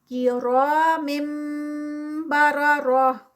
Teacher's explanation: एंड पे ये जो गोल हा है, ता है, वो हा में कन्वर्ट होगी